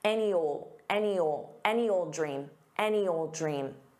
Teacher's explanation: Now, you combine this with any because that's the expression any. So, you can use that Y to transition to the next word, which is a vowel